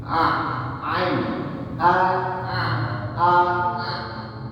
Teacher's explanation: Ain itu bukan keluar dari hidung, tapi dari atasnya hamzah. Kurang lebih di sini.